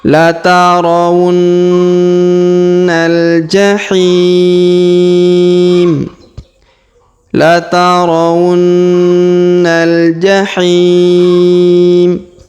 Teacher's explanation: Huruf hi kita panjangkan 2, 4 atau 6 harokat karena di depan huruf hi terdapat ya sukun sebelum huruf pemberhentian, dan huruf pemberhentian huruf ma kita sukunkan atau kita matikan.